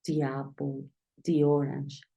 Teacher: obligatoriamente tienes que pronunciar di cuando la siguiente palabra Inicia con una vocal